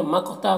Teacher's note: مقتا قاف کو پر پڑھنا ہے اور قلقلہ ہوگا